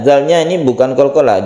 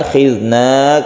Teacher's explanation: zalnya ini bukan qalqalah, jangan dipantulkan. Khidna, kemudian kita panjangkan, ini mad jaiz munfasil.